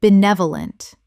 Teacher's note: Four syllables with the stress on the second, meaning well-meaning and kindly.